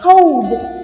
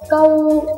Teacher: Nhớ cho cô là đừng đọc là câu ghê lắm, phải là cold. D có âm d em nhá.